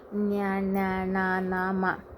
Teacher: ಮೂಗಿನ ಸಹಾಯದಿಂದ ಉಚ್ಚರಿಸಲ್ಪಡುವ ಅಕ್ಷರಗಳನ್ನು ನಾವು ಅನುನಾಸಿಕಗಳೆಂದು ಕರೆಯುತ್ತೇವೆ